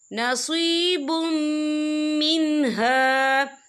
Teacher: رہا ہے، اور میم جو ہے حروف یرملون میں سے ہے، تو یہاں پر ادغام ہوگا، تو ہم اسے غنّے کے ساتھ پڑھیں گے